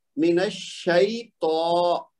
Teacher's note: طا کو لمبا کرنا ہے کیونکہ اس کے اوپر کھڑی زبر ہے